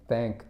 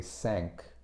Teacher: they pronounce a th like s like an S